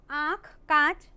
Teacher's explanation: अनुनासिक स्वर ध्वनि है, इसके उच्चारण में हवा नाक से कम और मुंह से ज्यादा निकलती है।